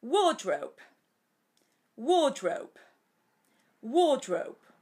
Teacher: pero un poquito entonada como yo digo y larga ya que la r en inglés standar no se pronuncia